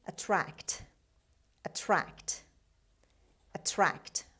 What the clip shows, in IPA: əˈtrækt